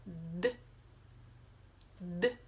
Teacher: É um som curto, a gente não consegue segurar por muito tempo, né? Não dá pra prolongar.